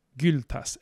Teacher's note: this is the front rounded vowel u